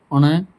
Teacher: मूर्धा प्लस नासिका हमारे मूर्धा और नाक मिलाकर ण